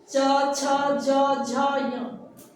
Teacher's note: च का उच्चारण स्थान तालु है जो हार्ड प्लेट होता है दांत से ऊपर वाला भाग